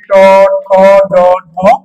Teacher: ট বর্গীয় বর্ণ উচ্চারণের স্থান হলো মূর্ধা